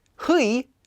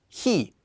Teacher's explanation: instead of getting '희' you'd just get '히.' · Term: simplified to ㅣ